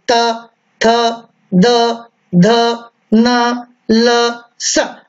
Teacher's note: हम उच्चारण करते हैं तो हमारी जिह्वा दांतों को स्पर्श करती है।